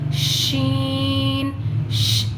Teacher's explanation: اور اس میں جو ہے شین، شین کی آواز زبان پر پھیلتی ہے، اس میں صفت تفشی اس میں پائی جاتی ہے، اس کی جو آواز ہے وہ زبان پر پھیلتی ہے۔